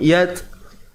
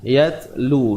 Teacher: Jadi huruf ta ni bila kita lafazkan akan kita dapati nafas kita ni akan terlepas. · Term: Sifat hams